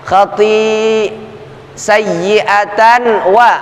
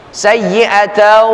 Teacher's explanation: Kasaba sayyi'atau, tanwin pada tak marbutah ketemu dengan huruf wawu, terjadi hukum idgham atau idkhal, masuk, enggak ada lagi bunyi annya. Khati sayyi'atan wa, enggak, tapi masuk kepada bunyi huruf wawu. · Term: idgham bi ghunnah